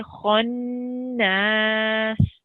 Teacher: whenever you pronounce noon mushaddid, there is a ghunna sound or a nasal sound. And you have to sit on it for 2 seconds. So you 2 seconds holding it, and then it's 2 seconds prolonging it.